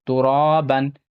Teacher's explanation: مد الف سے پہلے زبر ہے، تھوڑا کھینچ کر پڑھنا ہے، یہاں تنوین کے بعد الف آتا ہے تو الف نہیں پڑھا جاتا ہے · ہے، کنت ترابن، ترابن، یہاں پہ الف مد الف سے پہلے زبر ہے، تھوڑا کھینچ کر پڑھنا ہے